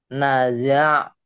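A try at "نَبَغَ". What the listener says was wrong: Ini ba. Ini ba titiknya satu.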